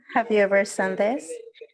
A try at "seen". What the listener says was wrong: So just be careful with the pronunciation of this verb because as you pronounce it, it sounded like sin, como pecado. Sonó más que todo como pecado, right? Es como que alguna vez has pecado, no, right? So be careful with the pronunciation. This is considered a long I. Esto es considerado una I larga.